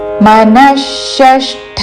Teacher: విసర్గ తర్వాత మూర్ధన్య ష తో పదము మొదలవుతున్నది కాబట్టి విసర్గ ఉచ్చారణ మూర్ధన్య ష